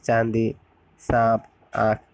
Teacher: इनका उच्चारण में वायु और मुख नासिका दोनों से निकलते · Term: अनुनासिक